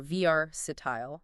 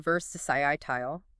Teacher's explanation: But in British English, it's often versisiitile. Stress shifts to the second syllable.